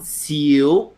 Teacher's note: So Lei is Lee, and then Xiu with a rising tone, Xiu.